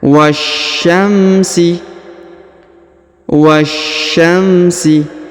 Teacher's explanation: Perhatikan huruf wa langsung disambung masuk huruf sya ya pada alif lam syamsiyah